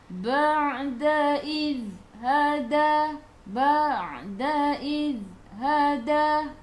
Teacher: za ni iz masuk ke dalam za di hujung lidah keluar daripada gigi depan. Jangan melantun. Jangan melantun, dia adalah sifat dia tahan.